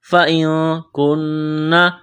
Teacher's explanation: نون ساکن کے بعد کاف ہے، اخفا کریں گے ، فَإِن كُنَّ، کاف کو باریک کرنا ہے، نون مشدد ہے، · نون مشدد ہے، آواز ناک میں چھپائیں گے ، غنہ کریں